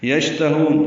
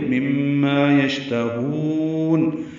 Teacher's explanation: یشتہون، شین ساکن پہ ہمز، تفشی ہے، آواز منہ میں پھیلتی ہے، سانس جاری رہتی ہے، تا باریک ہے، ہا کو لمبا کریں گے وقف کرتے ہوئے۔